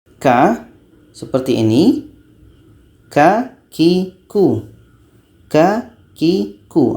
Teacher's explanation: letaknya ka ini pada pangkal lidah setelah ka menempel dengan langit-langit atas